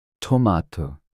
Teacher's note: place the tip of your tongue against the ridge just behind your upper teeth and push air out with a burst, making a sound similar to T. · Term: 티읒